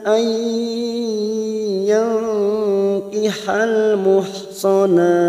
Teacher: Cara membacanya masuk ke huruf berikutnya yaitu huruf ya, nun sukun atau tanwin yang bertemu ya, namanya bacaan idgham bi gunnah.